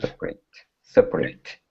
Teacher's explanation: If we're saying separate, okay, the separate devices as an adjective, the stress is still at the beginning, separate, but we pronounce the AT like an I sound, separate. Okay?